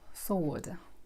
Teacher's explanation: W is not pronounced, it's silent